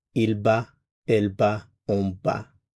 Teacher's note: The form is simply ba. Again, we're not pronouncing the consonant at the end, it's just ba.